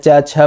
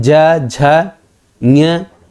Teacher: तो दोनों में अंतर फील होगा। क ख बोल रहे हैं च छ बोल रहे हैं तो स्वास निकल रही है लेकिन ज झ बोलते हैं तो देखिए आवाज झनझना के निकलती है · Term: नाद